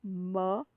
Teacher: The tongue, the two lips are touching each other. The labial, that is, the two lips are touching each other in order to articulate these words. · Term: bilabial sound